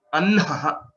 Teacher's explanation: There's a subtle difference with respect to the pronunciation of Hakara and then the Visarga. Anha, you are giving more air, more energy. Then Ha is a lighter one.